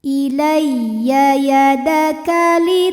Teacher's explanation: Ilaiya. Ya tasdid dibaca dengan menggunakan nabr. Artinya kita naikkan intonasi suara kita. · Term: nabar